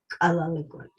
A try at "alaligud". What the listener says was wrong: You're saying the right, but you're saying it labulized. You're saying this kalaligud, and it's not K. I'm hearing K, so it's K. So say key, not that one.